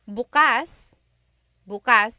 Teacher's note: the emphasis is on the second syllable that means open